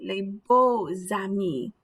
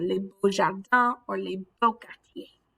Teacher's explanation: you get that Z sound in liaison, the X does it too